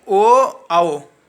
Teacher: ओ आओ को गले और ओठ से बोला जाता है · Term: कंठ और ओठ